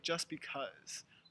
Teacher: in American English the t really disappears